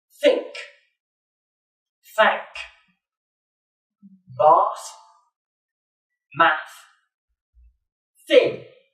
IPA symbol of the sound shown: θ